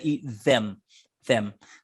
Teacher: to really say words like them and the you've got to get that tongue out there a bit otherwise you get the z